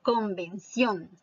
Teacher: la sílaba tónica es la última